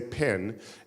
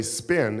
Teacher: Put your hand there and say spin, and there's no explosion of air.